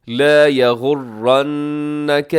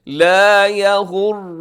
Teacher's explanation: نون مشدد کی وجہ سے غنہ بھی کر دیجیے گا ساتھ ہی